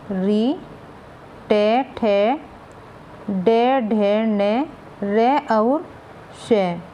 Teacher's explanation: ये मूर्धा से बोले जाते हैं